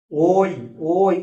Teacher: ও আর হসই দুটোকে নিয়ে হচ্ছে ওই এজন্য দুটো স্বরকে নিয়ে হচ্ছে বলে এটা যৌগিক স্বর